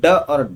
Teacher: जब हम ड और ढ बोलते हैं तो जीभ ऊपर जाती है और एकदम झटके से, एकदम शीघ्रता से नीचे आती है। तो यहां हो जाते हैं ये उत्क्षिप्त व्यंजन।